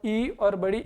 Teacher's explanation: तो आप यहां ध्यान दीजिए और इ और बड़ी ई का जब हम उच्चारण करते हैं तो अपनी ध्वनि है जो तालु की ओर टकराती है और वहां से फिर इसका उच्चारण होता है। आप बोल के देखिए आराम से।